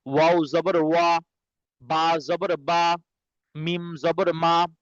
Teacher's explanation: এবার দেখেন, ওয়াও জবর ওয়া, ওয়াও কি দুই ঠোঁট গোল করিয়া, ওয়াও কি এই তিনটা একসাথে দুই ঠোঁট গোল করিয়া ওয়াও বা মিম উচ্চারিত হয়, ঠিক আছে? দুই ঠোঁট হইতে ওয়াও বা মিম উচ্চারিত হয়, দুই ঠোঁট হইতে ওয়াও বা মিম উচ্চারিত হয়, ঠিক আছে?